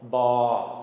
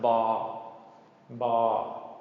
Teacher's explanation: this is called ba, long mid-tone, B sound, ba.